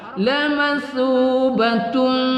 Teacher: ta berbaris tanwin bertemu dengan mim kita baca idgham ma'al ghunnah kita dengungkan